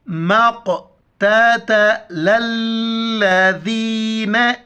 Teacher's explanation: میم قاف زبر مق، تا زبر تا زبر تا، مقتت، لام کو لام کے ساتھ ملائیں گے اور ذال کے وقت زبان باہر نکال کے یا کے ساتھ ملائیں گے